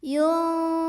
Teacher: ada ikhfa awsat karena ada nun sukun yang ketemu sama huruf fa. Maka cara membaca nun sukunnya ini adalah disamarkan ya, jadi nggak jelas yun, namun samar-samar menuju huruf fa.